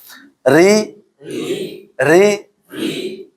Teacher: Nah, nanti kalau didahului sama fathah atau dhammah baru nanti tebal ya. Jadi ro ini kalau dia fathah tebal, dhammah juga tebal. Kasroh tipis atau tarqiq ya.